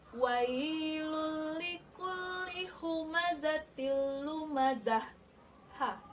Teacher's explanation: Kalau ta marbutah ini jika berhenti atau wakaf, maka dia berubah menjadi ha bunyinya.